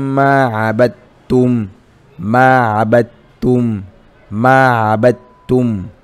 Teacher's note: Lakini tunapozungumzia idghamu mutamathilain, kuzikusanya herufi mbili, unachukua moja unaingiza ndani ya nyingine, tena bila ya ghunna · unakuta umechukua dal unaingiza ndani ya taa, unaitamka kwa kuikaza, unaitamka kwa kufanya kwa kuikaza.